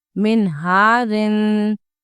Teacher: نون ساکن کے بعد آیا ہے ہا تو غنہ نہیں ہوگا، کیوں؟ کیونکہ یہ حروف ہلکی کا لیٹر ہے ہا. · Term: اظہار